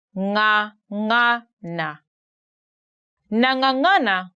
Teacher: you stick your tongue at the back upper part of your mouth and then The Voice come through your nose